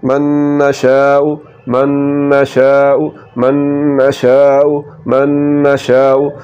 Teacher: ادغام میں ناقص، کیونکہ نون کی صفت غنہ باقی رہ رہی ہے